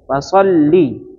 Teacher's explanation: cukup tasdid saja, tidak ada idgham bila gunnah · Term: lam yang bertasdid